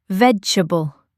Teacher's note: It's often said quicker, like vegetable. The middle part gets a bit shortened in natural speech.